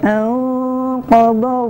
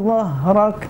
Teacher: Dha yang pertama dari sisi lisan bertemu dengan gigi geram atas. Dha yang kedua dari ujung lisan bertemu dengan ujung gigi seri bagian atas.